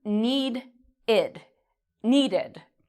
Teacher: it has a d sound at the end of need. So this becomes need-id, needed.